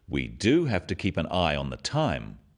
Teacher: Notice the emphasis on the word do